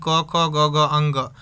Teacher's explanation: क वर्ग का बात करें तो यह कहां से बोला जाता है? कंठ से।